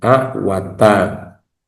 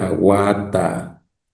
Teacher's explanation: Tiene el mismo saltillo y el mismo lugar, pero hay una vocal larga en la segunda palabra.